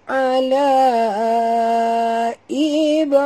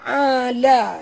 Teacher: la panjang 4 hingga 5 harakat, ya, la mat ini bertemu dengan hamzah jadi mat jaiz. Ib, okay, ba apabila dia mati di tengah-tengah kalimah kita kena lantunkan dia ala ib ibrahim.